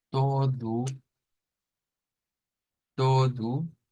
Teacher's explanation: palabra que termina en U que no va a sonar a todo sino que va a sonar a todu